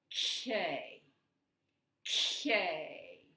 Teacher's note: we're blocking it with our tongue, but we're blocking it at the very back of our mouth. We're going to put the K up here.